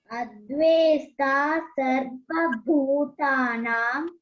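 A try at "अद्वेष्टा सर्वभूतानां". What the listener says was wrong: Very good. Excellent.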